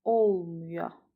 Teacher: Xeyr, olmaya sözündə vurğu əvvələ düşür.